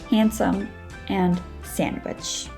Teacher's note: you don't pronounce the d in those two words